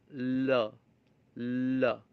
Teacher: it is produced by allowing air to flow around the sides of the tongue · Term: liquids